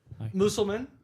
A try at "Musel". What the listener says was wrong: You added 3 letters to the end. It's Musel. There's no man on the end.